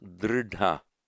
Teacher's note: So drehta merges and becomes dridha with the retroflex d and aspirated.